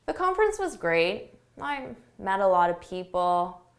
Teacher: A lack of enthusiasm, your intonation goes down, your volume goes down. Just think of it as being very tired or bored or not interested.